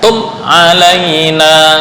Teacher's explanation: Mim mati bertemu dengan selain ba dan selain mim, itu disebut idhar syafawi. Artinya enggak boleh dengung. Yang dengung hanya ba dan mim.